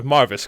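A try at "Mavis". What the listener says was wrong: Drop the R. The R is not there.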